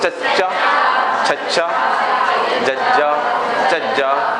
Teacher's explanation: ਸਾਡੀ ਜੀਭ ਤਾਲੂਏ ਨੂੰ ਸਪਰਸ਼ ਕਰਦੀ ਹੈ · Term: ਤਾਲਵੀ ਵਿਅੰਜਨ